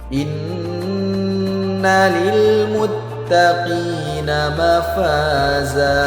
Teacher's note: Nun yang bertasydid maka hukumnya ghunah. Harus kita denggungkan dua harakat. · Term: gunnah